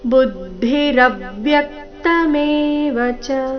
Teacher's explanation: ಭೂತಾನ್ಯ ಅಹಂಕಾರೋ ಮಹಾ ಭೂತಾನ್ಯ ಅಹಂಕಾರೋ ಬುದ್ಧಿರವ್ಯಕ್ತಮೇವಚ ಬುದ್ಧಿ ಭೂ ಮೇಲೆ ಆಘಾತ ರವ್ಯಕ್ತ ರ ಮತ್ತೆ ಯ ಮೇಲೆ ಆಘಾತ